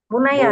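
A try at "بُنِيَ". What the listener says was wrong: kasrah. Di kasrah sebelum akhir.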